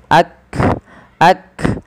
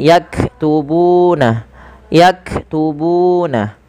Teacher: Makhraj huruf kaf dari pangkal lidah kita